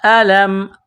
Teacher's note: لام کے اوپر تشدید ہے تو یہاں لام میں سختی کرنی ہے